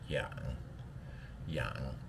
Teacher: Yang third tone so right at the bottom of your voice box